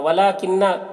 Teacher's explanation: वला किन्ना, लाम में खड़ा ज़बर है, एक अलिफ के बराबर खींचेंगे, नून मुशद्दद गुन्ना के साथ पढ़ेंगे।